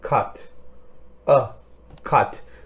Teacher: we are opening our mouth a bit, and it's a bit rounded. There's some rounding of the lips.